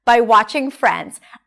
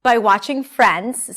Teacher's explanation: The stressed words are longer and higher in pitch, and everything in between is squeezed together and reduced.